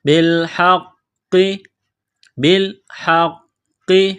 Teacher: قاف میں سختی کرنی ہے قاف کو موٹا کرنا ہے · ہا گلے کے درمیان سے زور لگا کر ہا کو نکالیں گے